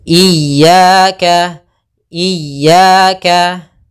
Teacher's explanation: kita sempurnakan kasrah i-ya jangan iyaka iyaka itu jadi e karena kita harus mengitmamkan harakatnya